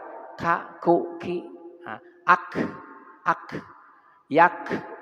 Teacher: Kemudian di kaf, kaf itu sifatnya hamas, berdesis, mengeluarkan angin baik mati maupun berharokat.